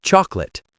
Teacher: the word chocolate usually only has two syllables in fast spoken English